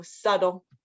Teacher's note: the T is not really pronounced with the T sound, with the T sound, like tiger. It's a D sound. So it would phonetically be spelled like subtle, like that.